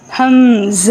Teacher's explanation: آخر والا ہا ساکن کے ساتھ نکلے گا، ہا پوری ادا نہیں ہوگی، لیکن ہا کی آواز سینے سے آئے گی. اور یہ والا قاعدہ قرآن پاک میں ہر اس جگہ پر ادا ہوگا جہاں ہا پر وقف ہوگا.